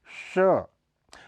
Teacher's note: श, यह अघोष ध्वनि है, इसके उच्चारण में जीभ और मूर्धा का प्रयोग किया जाता है, इसलिए इसे मूर्धन्य श भी कहा जाता है।